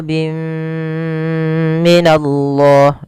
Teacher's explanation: yang bertemu dengan huruf mim pada dasarnya kita membaca bin minallah karena bertemu mim tanwinnya dimasukkan itu yang kita namakan dengan Idam bunna disertai dengan gunah masuk